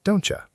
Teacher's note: in fast speech, the T and Y blend together and become a ch sound. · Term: assimilation